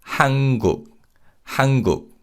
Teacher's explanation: And when we say this name, because of nasalization, the 니은 받침 in Han is pronounced as an 이응 sound